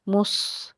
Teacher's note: स्वाद जो है वो मुस्तालिया का हर्फ है और इसके साथ साथ के हर्फ सफ़ीरिया का हर्फ भी है, सीटी की आवाज़ आए मगर पुर पढ़ना है